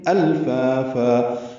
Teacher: حمزہ کو لام سے ملانا ہے، الفا الف مدہ ہے، دو حرکات لمبا ہے ، اور فن میں وقف کریں گے تو فا بن جائے